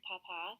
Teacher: You can hear in the word papa, there is stress at the end because of the accent, and that makes it possible to tell the difference between the two words.